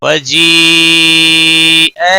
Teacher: مد متصل ہے پانچ الف کے برابر کھینچ کر پڑھیں گے